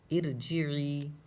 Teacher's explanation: رائے ساکنہ سے پہلے زیر ہے، اس لیے اس کو پر نہیں پڑھیں گے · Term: باریک